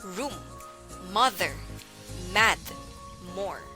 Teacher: formed by pressing the lips together while the vocal chords are engaged it is before a voice speech sound this sound is unique